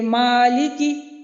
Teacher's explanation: میم متحرک کو بغیر غنہ کے پڑھا جائے گا، جیسے کہ مالکی، اب میم متحرک ہے، یہاں پہ اس کے اوپر کھڑا زبر ہے، حرکت لگی ہوئی ہے، تو اس کا مطلب یہ ہے کہ یہ میم ہم بغیر غنہ کے ادا کریں گے۔ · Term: عدم غنہ